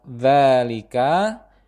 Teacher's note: pada huruf dza dibaca panjang sebanyak dua harakat